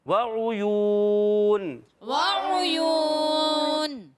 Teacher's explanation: مگر یا واو پیش یو، واو مدہ ہو گیا، ایک الف کھینچنا پڑے گا اس کو. جی ہاں، اس کو کھینچ کر ہی ادا کریں گے. · اور عین کا مخرج حلق کا درمیان والا حصہ